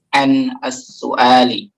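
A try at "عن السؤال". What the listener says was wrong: Nah, jangan ada ain, jangan su'ali, jangan terkesan begitu. Kalau pakai hamzah as-su'al pertanyaan, tapi kalau pakai ain as-su'al ini artinya nih. Ya, ada beberapa orang terbawa-bawa jadi ain.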